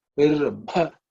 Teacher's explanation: watch the fourth letter in the pa varga. It's an aspirated one.